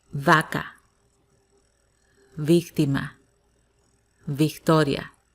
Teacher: in spanish v and b they sound the same they sound as b